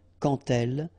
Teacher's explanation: Remember, when you will have this d, you will phonetically pronounce it like t. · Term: liaison